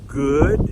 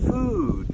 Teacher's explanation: Now we're going to practice what is called the short double O sound, like in good. Now, notice your mouth is more relaxed than on the ooh sound